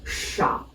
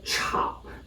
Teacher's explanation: the initial sound changes from SH to CH as we pronounce the character